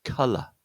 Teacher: Yeah, that's that's a stressed sound. The second syllable is an unstressed sound, and that's what we would like to call what we call a schwa sound.